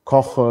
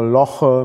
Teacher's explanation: Das K ist velar, das L ist lateral und alveolar.